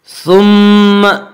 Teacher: میم مشدد غنہ ہوگا، غنہ کی مقدار ایک الف ہے